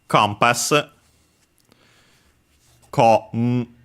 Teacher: the n in the middle, because there's a following p, becomes m